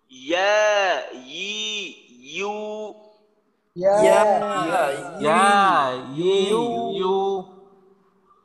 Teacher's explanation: ইয়ার মাখরাজ হলো জিহ্বার মধ্যখানে, তো আপনি যদি এইটা হলক থেকে উচ্চারণ করেন তাহলে কিন্তু কখনোই এইটা ইয়া হবে না, কখনোই এইটা ইয়া হবে না, তখন ওইটা হবে হামজা।